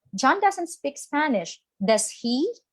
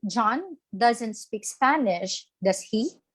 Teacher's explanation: the intonation should be rising for example john doesn't speak spanish i am aware that john doesn't speak spanish but i want to make sure so i would be raising my intonation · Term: rising intonation